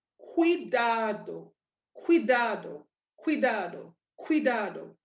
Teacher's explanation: You're hearing that QU, like that KW, and that ko sound coming out, along with the I being emphasized.